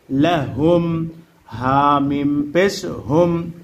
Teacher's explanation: মিম সাকিনে ইজহার গুন্নাহ সারা স্পষ্ট করিয়া পড়িতে হয়, ইহাকে মিম সাকিনের ইজহার বলে।